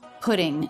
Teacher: D between vowels sounds the same as T between vowels we call that a flap t